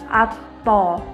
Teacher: huruf ta tidak mengalir nafas dan huruf to diucapkan dengan suaranya menebal. · Sementara ketika kita melafalkan huruf to, posisi lidah kita bagian pangkal terangkat. Bagian depan pun menutup.